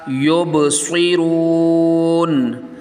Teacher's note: با میں یہاں پہ یب میں کلکلہ کرنا ہے